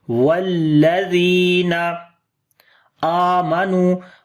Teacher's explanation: حمزہ کو لمبا کریں گے، کھڑی زبر ہے اس کے اوپر.